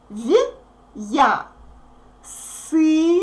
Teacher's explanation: It means that we pronounce this consonant soft, v, and then we pronounce ya like in the alphabet. So we get v, ya.